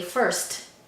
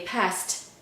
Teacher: these T's sound breathy, aspirated